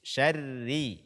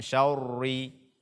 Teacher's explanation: Roro bertasydid kemudian dia berbaris kasrah ini dibaca dengan tipis seri bukan sorry-sorry kemudian membaca Oh dengan tipis pada kata holako